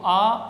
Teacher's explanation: इसको सहायता नहीं मिली है ये एक का दुगुनी ध्वनि है इसको बोलने में डबल टाइम हमने लिया है ये इसका दीर्घ रूप है